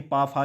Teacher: हैं ओस्ट में ये ओस्ट में बोले जाते हैं यानी कि पा फा जब बोला जाता है तो हमारे दोनों होठ आपस में स्पर्श करते हैं